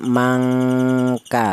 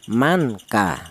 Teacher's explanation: nun matinya ini dibaca samar atau cara bacanya disamarkan ya. Jadi cara bacanya mangka, seperti itu. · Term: ikhfa